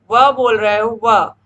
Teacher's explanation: तो आप देखोगे कि जब आप व बोल रहे हो व, तो आपका निचला होंठ ऊपरी दांतों को स्पर्श कर रहा है